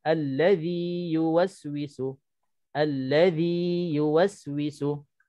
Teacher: nak kena tetapkan sebutan zi dua harakat tanpa kita idghamkan ke dalam huruf ya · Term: mad tamkin